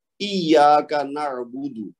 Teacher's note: یا مشدد ہے سوری، تو اس کو ہم نے زور دے کے پڑھنا ہے، لیکن زور دینے کے بعد اس کو 2 حرکت پھر لمبا بھی کرنا ہے کیونکہ یا کے بعد الف خالی ہے تو وہ الف مد بن رہا ہے.